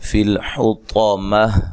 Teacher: طا کو خوب موٹا ادا کرنا ہے اور وقف کی صورت میں گولتا ہائے ساکنہ میں تبدیل ہو جائے گی